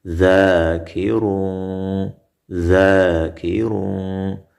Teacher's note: زال الف زبر ذا کاف زیر کی را دو پیش رون ذاکرون ذاکرون دا الف مد ده او را کې تفخیم وشو په ډکه خوله ویل شوه او تنوین کې ورسره اخفا وشوه